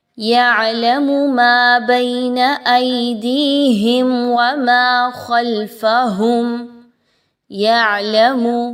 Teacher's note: عین کی حرکت کو واضح رکھیں گے، یعلمو نہیں پڑھنا، لمبا نہیں کرنا